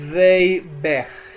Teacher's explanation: Noten que no pronuncié they begged, sino convertí el sufijo ed en una t suave